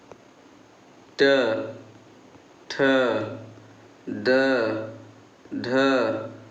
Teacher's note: मूर्धन्य में जीभ जहाँ उलट जाए